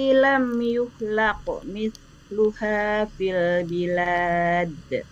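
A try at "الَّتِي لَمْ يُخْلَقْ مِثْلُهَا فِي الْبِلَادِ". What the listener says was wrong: Secara huruf Ibu aman, jadi tidak ada yang tertukar. Sedikit saja Bu. Ketika kho ini kan dia punya sifat rohwah, alirkan suaranya lebih lama, jangan terlalu cepat, jangan yuhlaq. Jadi nggak ada kho-nya nggak terasa gitu. Jadi lam yuhlaq.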